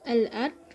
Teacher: Lalu al-ard yaitu alif lam qamariyah karena alif lam bertemu dengan alif berharokat, membacanya secara jelas